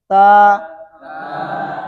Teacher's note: تا کے الف کو موٹا کرنے سے بھی بچائیں گے، ایک الف سے زیادہ کھینچنے سے بھی بچائیں گے، کم کھینچنے سے بھی بچائیں گے